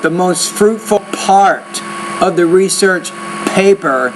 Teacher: need to pronounce the P with more air